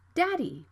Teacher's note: the D is between vowels so the sound can be flapped